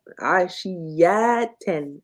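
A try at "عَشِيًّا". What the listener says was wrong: I could feel it that you couldn't hear the shadda. I guess you couldn't hear it because my feeling was right. Ashiyatan.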